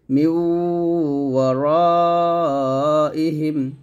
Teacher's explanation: তো নিয়ম হচ্ছে নুন সাকিন তানবিনের পর যদি ইয়া, মিম, ওয়াও, নুন আসে তাহলে গুণনা হবে এবং মিলাবেন